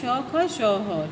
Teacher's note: ऊष्म का मतलब होता है गर्म, ऊष्म का मतलब होता है गर्म, जिसको बोलने में, जिसको उच्चारण करते समय वायु जो है रगड़ खाकर गर्म होकर के आपके अंदर से बाहर निकलती है, उसे जो है हम ऊष्म व्यंजन कहते हैं।